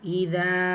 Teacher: இதா இந்த அலிஃப் மத்தா 2 ஹரக்கத்தளவு நீட்டம் கொடுத்து ஓதணும்.